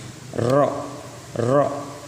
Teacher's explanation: ro itu punggung ujung lidah bergetar dengan gusi, ya. Jadi punggung ujung lidah bergetar dengan gusi.